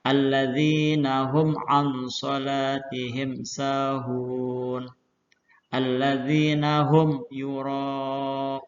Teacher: Disebut izhar syafawi apabila mim sukun bertemu dengan salah satu huruf hijaiyah selain huruf mim dan ba. Cara membacanya yaitu dengan jelas di bibir dan mulut tertutup tanpa dipanjangkan.